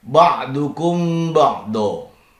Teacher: mim sukun yang berjumpa dengan ba. Bacaannya adalah ikhfa safawi. Dibaca dengan samar dan didengungkan.